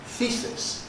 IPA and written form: ˈθiːsɪs (thesis)